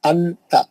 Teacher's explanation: جیسا ہم اظہار میں پڑھتے نہیں پڑھیں گے نون کو کلین. نون کو جو ہے چھپا لیں گے اور غنّہ بھی کریں گے.